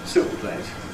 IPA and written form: ˈsuːʔpleɪt (soup plate)